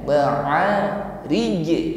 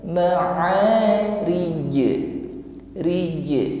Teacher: Maka di sini huruf jim kita tampakkan sifatnya yaitu qalqalah, dan kebetulan huruf jim ini di akhir ayat, maka hukumnya menjadi qalqalah kubra, ya. Ada bunyi pantulan, ya. ma'rij, dan pantulannya jelas.